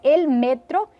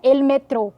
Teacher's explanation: a sílaba forte Deixa de ser a última como no português e passa-se a penúltima no espanhol